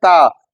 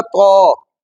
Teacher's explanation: تا کو تھوڑا سا پر کر دیں۔ ایک ہم لفظ پڑھتے ہیں تا، تا کو جب پر پڑھیں گے تو وہ بن جائے گا تو، ٹھیک ہے؟